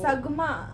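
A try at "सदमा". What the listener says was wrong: It's not Sagma, it's Sadma.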